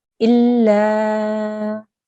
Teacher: Again, here we have another alif mad, so we will have to elongate this lam sound for 2 seconds as well